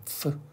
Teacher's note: 자 다음에 얘는 f. 윗니를 아랫입술 사이에 살짝 올려놨다 바람 빠지는 소리. f. 바람 빠지는 소리.